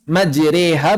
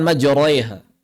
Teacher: Oleh karena itu ketika kita misalnya melihat ro fathah apabila dia imalah, ro fathah apabila dia imalah, imalah itu kan ke arah ya, alif ke arah ya, maka dibaca tipis majreha bukan majraiha.